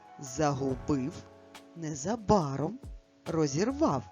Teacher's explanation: Який склад наголошений в цих словах? Третій склад.